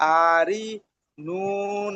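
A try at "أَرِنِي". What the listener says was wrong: আ কেন টান দিচ্ছেন? হামজা জেবার আ, হারাকাত আছে না?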